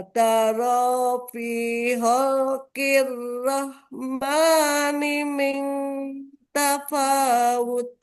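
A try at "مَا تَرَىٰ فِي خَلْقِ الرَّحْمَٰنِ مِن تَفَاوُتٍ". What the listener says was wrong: Nah, ketukar iramanya, Ibu. Pelan-pelan. Ujungnya tapi ya, ujungnya tadi tafawut. Mataro fi khalqir rahmani min tafawut.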